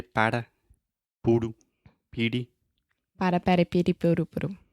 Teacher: your tongue is just up touching the top of your mouth really really fast and it's just a quick little tap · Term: flap T